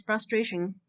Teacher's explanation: So did you notice that the syllable before the tion is stressed? So it's not frustration.